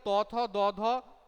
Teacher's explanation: ঠিক আছে, আচ্ছা নেক্সট দেখো ত, থ, দ, ধ, দন্তন্য, এগুলো উচ্চারণ করতে গেলে কোথায় মানে জিভটা গিয়ে স্পর্শ করছে? জিভটা স্পর্শ করছে দাঁতে, এই জন্য এটার নাম হয়ে যাচ্ছে দেখো দন্তবর্ণ